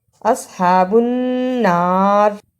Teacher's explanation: نون مشدد کو ادا کیا، را کو باریک پڑھا